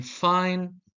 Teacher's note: F in fine uses the lower lip against the upper teeth